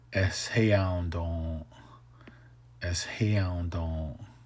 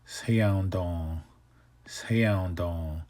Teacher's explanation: So instead of don with the glottal stop, now it's don with the H.